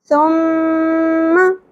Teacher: 3 نقطوں والی تا کو نرمی سے ادا کیا جاتا ہے، سیٹی والی سین کی آواز نہیں آئے گی، باریک ادا ہوگا اور نرمی سے، ٹھیک ہے؟ · غنہ کی وجہ سے زبر کو زیادہ نہیں کھینچنا